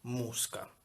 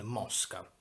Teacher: in siciliano è rimasta così com'è, musca, senza aprire la vocale, ma in toscano si è mutata in mosca. Quindi quello che è successo nel toscano è un'apertura vocalica, che il siciliano non ha perché è più conservatore.